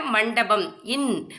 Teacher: அந்த நுனி நாக்கு வந்து மேல் எண்ணத்தை தொடும்போது வருது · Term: இணை எழுத்துக்கள்